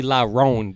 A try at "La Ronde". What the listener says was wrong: La Ronde, you need to roll the R. rolling the R. La Ronde.